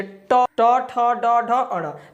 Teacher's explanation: ठीक है, दांत के जस्ट ऊपर उसको मुर्दा बोला जाता है। तो जब भी आप ट वर्ग के किसी भी वर्ण का उच्चारण करेंगे तो हमारा जीभ जो है कहाँ पर टच करेगा, तो दांत के जस्ट ऊपर, यानी कि मूर्धा में पर। ठीक है, तो ट वर्ग के किसी भी वर्ण का अगर आप उच्चारण करेंगे तो कहाँ क्या हो जाएगा, तो मूर्धा हो जाएगा, मूर्धा।